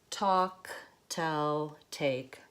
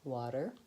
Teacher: But when I say water, I don't use that aspirated T with a puff of air. I use the flap T instead. The flap T has no air. So the puff of air doesn't come out, and it's also voiced.